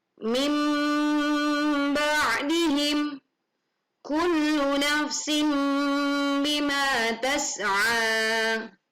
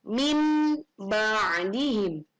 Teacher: Iqlab adalah nun sukun atau tanwin bertemu huruf ba, maka bunyi nun sukun atau tanwin diganti bunyi mim sukun